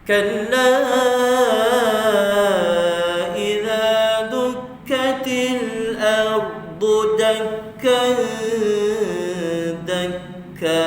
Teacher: fokus bunyi dengung dia tu, bunyi ikhfa dia pada bawah makhraj huruf dal.